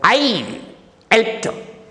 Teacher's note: the emphasis, the stress is on the subject I